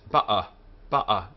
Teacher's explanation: the Aleph is also preserved as a glottal stop. The sound you hear when someone says ba'a, ba'a, that if you put your hand on your throat and say ba'a, the quick stopping and starting of the air is the consonantal sound of the Aleph.